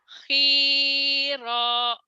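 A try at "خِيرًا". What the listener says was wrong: Salah lagunya. Khiro, khiro gitu Bu. Khi, khi. Khiro, mhm. Bukan, nggak ada yang panjang. Khairo, khairo, mhm.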